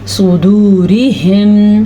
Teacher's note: سواد کو پر پڑھا, را کو ہم نے باریک پڑھا